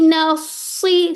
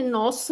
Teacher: तो आपने क्या करना है, नून को बारीक ही रखना, नौस नहीं कर देना।